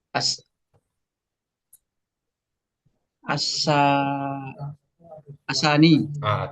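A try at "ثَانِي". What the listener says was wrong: Tani. Mumtaz. Tani.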